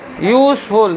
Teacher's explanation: vowel letter से शुरू है, लेकिन साउंड कॉन्सोनेंट की तरह है। यूजफुल, यो का उच्चारण हो रहा है बच्चों, इसीलिए कॉन्सोनेंट साउंड हो रहा है, इसीलिए ए लगेगा।